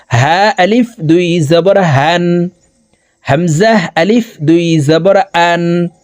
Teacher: হামজা এই দুইটি হরফকে হলকের শুরু থেকে উচ্চারণ করে পড়িতে হবে